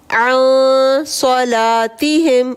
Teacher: عن پہ اخفا کا قاعدہ، نون غنہ کے بعد صاد آ رہا ہے، یہاں پہ غنہ ہوگا